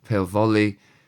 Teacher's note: they're using the V sound of the Welsh F to mimic the V sound of volley in English